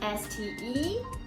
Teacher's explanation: when you say the letters, your intonation tends to go up, go up, go up, and finally, when you're about to finish, you go down.